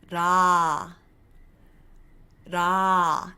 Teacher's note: I'm not using my lips ra to make that consonant sound I'm also not flicking my tongue too hard so I'm not going la la instead I am saying it with the L but it's a very very soft tongue flick · notice how it's a slightly rolled sound not with the lips notice my lips haven't moved at all